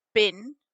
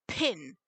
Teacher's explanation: bin versus pin you should be able to feel quite a difference in the amount of air coming out and that's aspiration so in english b is voiced and unaspirated · in english b is voiced and unaspirated and the p is voiceless and aspirated but in gaelic both a p and a b are voiceless